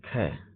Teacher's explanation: स्पर्श व्यंजन, कंठ ध्वनि, अघोष और महाप्राण ध्वनि है